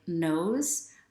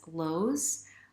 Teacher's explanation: there is a tendency sometimes for native Mandarin Chinese speakers to pronounce the N sound in American English, replace it with an L sound